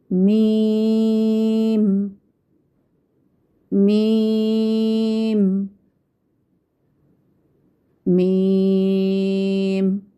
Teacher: मीम की अदायगी में आवाज़ नाक में नहीं जानी चाहिए। हम कहें मीम, मीम, इस तरह से नहीं अदा होगा।